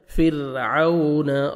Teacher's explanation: را ساکن سے پہلے زیر ہے، را کو آپ نے باریک کرنا ہے ، عون واولین ہے، لپس کو راؤنڈ میں لے کے جانا